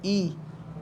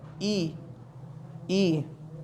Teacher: हमारी जो जीवा है वो तालु के ऊपर टच हो रही है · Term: तालव्य स्वर